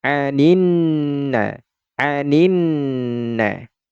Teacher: huruf lam ini suaranya kan dileburkan ke huruf nun, maka tidak lagi terdengar suara lam sukunnya. Sehingga dari sini, dari ni langsung ke huruf nun yang ini. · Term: alif lam syamsiyah, idgham syamsiah